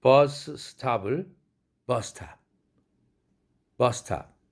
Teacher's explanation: 공기가 입 바깥으로 마찰되어서 나오는 이러한 경우 두 음을 한 음으로 발음해라 이겁니다